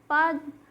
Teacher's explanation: प बोलते समय हमारे ऊपर और नीचे के ओट एक दूसरे को टच कर रहे हैं एक दूसरे को स्पर्श कर रहे हैं तो इसका उच्चारण स्थान